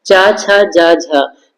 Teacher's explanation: चा, छा, जा, झा ये स्पर्श संघर्षी होते हैं